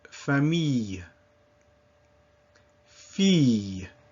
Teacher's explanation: So the sound E, and then with a little Y sound at the end, E, as in famille, fille.